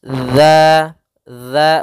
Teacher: ujung lidah menempel dengan gigi seri atas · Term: dalal